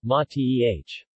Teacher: mate with the accent on the first syllable